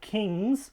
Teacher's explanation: if you were to add the inflectional plural s suffix, again voiced here because ng is voiced